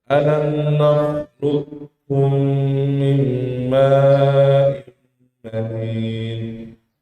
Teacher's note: Abu Amr Ad-Dani membacanya dengan qafnya hilang secara keseluruhan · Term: idgham sempurna